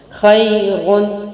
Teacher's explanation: خیرون، خا موٹا، یا ساکن بیچ میں ہے اور باریک ہے. را کے اوپر 2 پیش کی تنوین ہے، اس لیے را بھی پہلے موٹا پڑا جائے گا. کنٹینیوئنگ کنڈیشن یعنی جاری رکھنے والے میں اس کو موٹا پڑھیں گے.